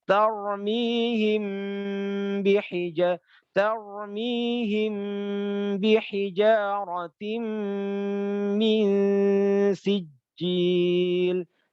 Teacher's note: Yang pertama ikhfa syafawi, mim sukun bertemu dengan ba. Setiap ada mim sukun bertemu dengan ba, maka apa? Baca aja dengung 3 harakat mingkem. · baca aja dengung tiga harokat mingkem